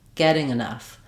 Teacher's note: getting has 2 syllables where the first syllable is the stressed one. The ing doesn't matter.